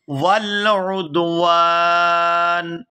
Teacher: نون ساکن کے ساتھ ملائیں گے، واو الف نون زبر وان، یہاں واو کو کھینچتے ہوئے نون ساکن کے ساتھ ملائیں گے